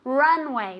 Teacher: with the accent on the first syllable